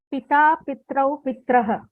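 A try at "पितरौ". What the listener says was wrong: Pita, Pitarau, Pitaraha. Pitarau, Pitaraha. Please be careful of the spelling. If you say Pitrau, it will be Tra.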